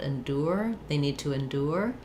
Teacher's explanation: So a couple of different pronunciations for endure. We can do endure with a tense U sound